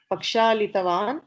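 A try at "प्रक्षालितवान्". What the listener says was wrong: Not pra.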